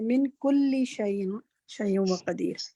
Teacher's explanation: لام پر عموماً کافی تشدید دے کے ہم ذرا ٹھہر زیادہ جاتے ہیں، تو اتنا نہیں ٹھہرنا